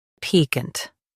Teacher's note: Stress P. Keep -cant quick and soft.